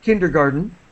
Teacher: we don't really pronounce the T